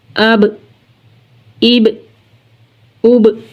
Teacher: बा हरूफ़े कलकला में से है, तो जब हम बा को अदा करेंगे तो जुम्बिश होगी